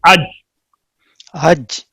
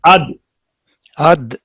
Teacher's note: इनके सुकून के वक्त आवाज रुक जाती है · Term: शिद्दत